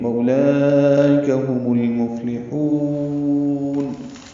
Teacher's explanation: یہ مد عارض سکون ہے تو لمبا کیا · ہم المفلحون میں میم کو لام سے ملا دیں گے، اظہار قمری ہوگا، فا ساکن پہ ہمس ہوگا، لام باریک پڑھا جائے گا، ہا وسط حلق سے ادا کرتے ہوئے لمبا کریں گے.